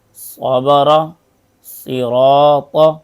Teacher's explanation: صاد کی آواز موٹی اور سیٹی والی ہوتی ہے